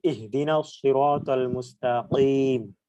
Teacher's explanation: এটা হচ্ছে বড় কফ যেটা জিভার গোড়া উপরের তালুর সাথে লাগিয়ে উচ্চারণ করতে হবে